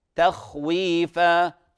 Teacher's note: تخويفة مرققة، خاء مفخمة،